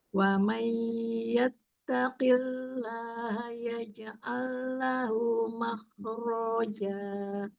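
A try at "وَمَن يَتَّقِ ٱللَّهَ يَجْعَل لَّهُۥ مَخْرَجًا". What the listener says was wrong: Ronya tidak dipanjangkan. Makhroja. Iya, makhraj qafnya ya mau lebih terasa ketika dia kasroh. Iya, kemudian kho-nya isti'lanya mau lebih terasa. Makhroja. Jadi tidak mah ya, tapi agak sedikit angkat pangkal lidahnya.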